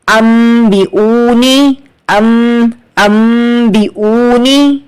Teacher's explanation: आपको इकलाब करना है, मतलब बदल देना है नून साकिन को मीम से